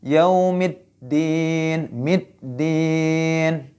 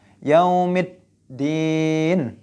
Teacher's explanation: Yaitu idgham syamsiyah. Harus dimasukkan ke huruf dalnya langsung. Jadi alif lamnya tidak dibaca.